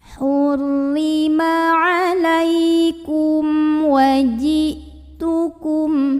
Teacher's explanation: mim sukunnya dibaca jelas bunyi mnya tidak perlu kita tahan · Karena ada mim sukun yang menghadapi huruf selain mim dan ba, yaitu huruf waw. Maka mim sukunnya dibaca jelas. Bunyi amnya tidak perlu kita tahan, ya. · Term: idhar syafawi